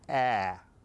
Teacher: the a is what we term a short vowel sound a and it requires the mouth to be wide open